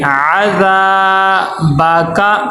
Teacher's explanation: ذال کے آگے الف مدہ ہے، ذال کو ایک الف کے برابر لمبا کریں گے